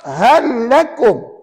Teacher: masukkan huruf pertama lam mati ke dalam huruf yang kedua lam bersabdu dan dibaca tanpa dengung